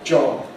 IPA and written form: ʤɒb (job)